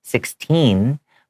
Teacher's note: I have that n Sound at the end and that t is hard